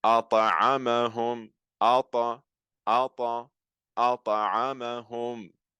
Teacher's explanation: So again, here the ta, because it's not coming at the end of the word and I'm not stopping on it, the qalqala is heard, but it's not as intense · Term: qalqalatu al-sughra